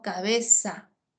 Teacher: ceseo pronunciar la z como s